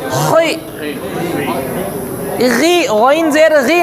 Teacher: خا زیر خی باریک نہیں پڑھیں گے، موٹا ہی ہوگا. خی، غی، غین زیر غی نہیں ہوگا، غین زیر غی.